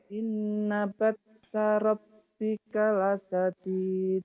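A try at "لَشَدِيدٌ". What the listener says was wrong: La syadid. Hutang shin juga ya. La syadid shin. Iya, la syadid hutang shin terus.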